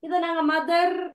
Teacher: அப்ப நிறைய இடங்கள்ல வந்து ஆர் வந்து சைலண்டா தான் வரும். மதர் இத நாங்க மதர் அப்படின்னு உச்சரிக்க கூடாது.